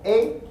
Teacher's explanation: that's a mid front tense vowel you have to have mid to distinguish it from e you